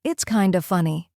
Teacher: The small pause after keeps it relaxed. The connection between it's kinda makes it smooth.